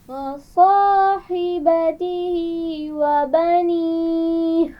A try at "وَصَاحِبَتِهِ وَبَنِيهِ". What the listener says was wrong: وَصَاحِبَتِهِ، دوبارہ پڑھیے. ہا کے مخرج کو واضح کیجیے. وَصَاحِبَتِهِ.